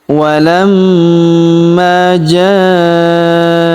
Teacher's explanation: huruf ma kita tahan dan kita tekan karena terdapat tanda tasydid di atasnya. Lalu kita panjangkan dua harokat karena alif di depannya ya.